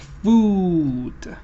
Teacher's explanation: when you are saying this your jaw moves upward your lips move forward and your lips are rounded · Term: long ooh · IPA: /uː/